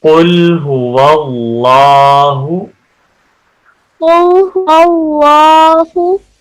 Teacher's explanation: قاف کو بھی موٹا پڑھیں گے اور اللہ کے لام کو بھی موٹا پڑھیں گے، کیونکہ اللہ کے لام سے پہلے زبر ہے، اور اگر اللہ کے لام سے پہلے زبر والا حرف ہو تو اللہ کے لام کو موٹا پڑھتے ہیں، پر پڑھتے ہیں۔